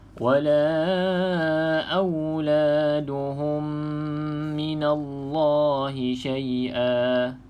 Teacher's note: minallah kena tebal sebab lafzul jalalah dekat sini sebelumnya huruf berbaris di atas, maka kena baca dengan huruf tebal. Minallah, kita tak baca nipis.